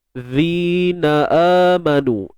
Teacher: Ayyuhallazi, zi mat asli. Huruf zal keluarkan sedikit hujung lidah.